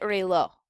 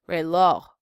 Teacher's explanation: According to rule number 3, if a word ends in a consonant that is not N or S, the last syllable gets the stress. So the very last vowel in this word is going to receive the stress when we pronounce it. Reloj.